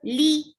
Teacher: lam is for kasra, give e sound, and it is a short sound.